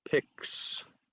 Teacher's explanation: So remember, you have to do the K sound and the S sound. Both are unvoiced, but you need both